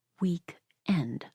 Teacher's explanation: With extra emphasis on the final syllable.